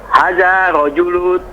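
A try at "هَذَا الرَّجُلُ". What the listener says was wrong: Ar-rajulu itu ada ro yang harus disambung dengan dal sebelumnya. Berarti hadzar rajulu.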